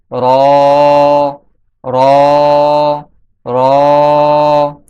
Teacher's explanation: র র এর মাখরাজ হচ্ছে জিহ্বার আগার পিঠ তার বরাবর উপরের তালুর সঙ্গে লাগিয়ে উচ্চারিত হয়। জিহ্বার আগা, জিহ্বার আগার পিঠ যখন তার বরাবর উপরের তালুর সঙ্গে লাগবে তখন র উচ্চারিত হবে।